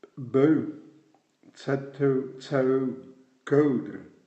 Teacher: O-E-U-E, c'est une diphtongue fréquente qui n'existe pas en français